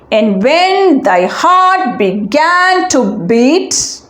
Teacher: third line begins with an unstressed syllable